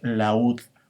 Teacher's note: La U es una vocal cerrada y en este caso es tónica.